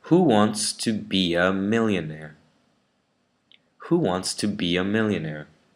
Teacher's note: the ER in the British way is pronounced with the schwa, so bia. So it sounds like who wants to be a millionaire?